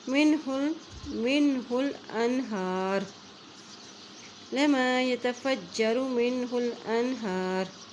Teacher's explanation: را کی جو حرکت ہے وہ ساکن ہو جائے گی، وہ نہیں پڑیں گی، صرف را کی آواز سنائی دے گی